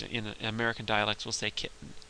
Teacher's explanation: most people if they're speaking normally or casually at least in American dialects will say kitten with a with a stop in your throat there that glottal stop and there are sometimes when in in